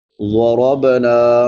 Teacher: ज़ाद मोटे हरूफ में से है, इसको पुर पढ़ेंगे।